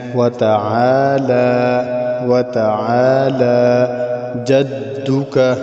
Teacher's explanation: لام کے اوپر کھڑی زبر ہے، اس کو ہم نے ایک الف کی مقدار لمبا کرنا ہے، کھینچنا ہے